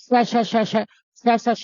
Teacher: तो मुंह के अगले भाग से हवा निकल रही है केवल, तो कंपन नहीं हो रहा, यहाँ कंपन नहीं हो रहा। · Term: अघोष वर्ण